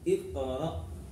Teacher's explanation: Di ayat pertama, Iqra, di sini ada qalqalah, ya, qaf sukun qalqalah, harus mantul, ya.